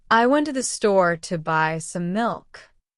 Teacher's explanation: The stressed words are went store, buy milk. The other words are faster and softer. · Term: stress-timed language